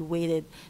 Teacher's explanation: the contrast between T and D is neutralized